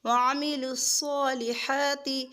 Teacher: صا کھڑا بھی کریں گے اور پر بھی کریں گے